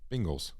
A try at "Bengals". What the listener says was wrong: It's a long E. It's wrong. Bengals. The Bengals. The Bengals.